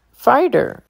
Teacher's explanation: Fighter, T sounds like a D.